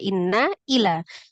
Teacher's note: Panjangnya yang tadinya 2 berubah menjadi 4 atau 5 harokat. Karena ketemu dengan hamzah tadi ya. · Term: mad jaiz munfasil